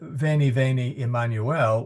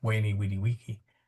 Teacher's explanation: So in classical Latin, Caesar would have made that sound a W sound